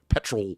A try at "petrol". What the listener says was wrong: There's an O in there. It's petrol.